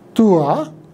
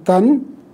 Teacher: the aspiration which was there on the consonants of Sanskrit has been shifted to the vowel